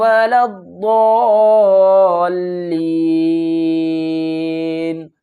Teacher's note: اس الف کو بھی چھوڑ دیں گے اور لام کو بھی چھوڑ دیں گے، اس لام کو اس ضاد سے ملائیں گے